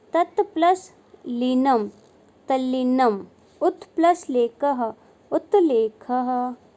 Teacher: त से परे ल होने पर त का ल में परिवर्तन हो जाना